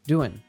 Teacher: With verbs ending in ing, like doing, it's very common that we drop the g sound